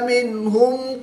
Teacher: نون ساکن کو ظاہر کر کے پڑھیں گے, غنہ نہیں کریں گے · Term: اظہار